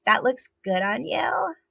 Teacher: so those two things concurrently dancing together in the affectation so it's pitch which is way up there so it's really high and then it's vocal fry and then it's also up talk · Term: sexy baby vocal affectation